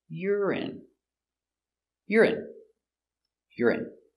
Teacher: Stress on the first syllable.